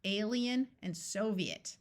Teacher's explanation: where it splits into two vowel sounds in these two words the I takes on a clear long e sound